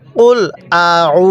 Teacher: আইনটা পড়ার সময় আমাদের গলার মধ্যে হালকা চাপ দিয়ে পড়লে আইনটা সহি শুদ্ধ উচ্চারণ হবে